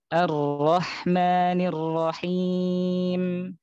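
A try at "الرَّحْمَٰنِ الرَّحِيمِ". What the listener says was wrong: Ini sepertinya sifat takrir pada roh antum itu terlalu terlalu berlebihan. Jadi takrir pada huruf roh yang kayak ar yang kayak r di kita. Jadi cukup misalnya kayak Ar-Rahman ya.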